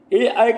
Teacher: कंठ और ताल जो है दोनों के इस्तेमाल से ए ऐ का उच्चारण हो रहा है, तो इसलिए यहाँ पे क्या होगा कंठ तालव्य होगा।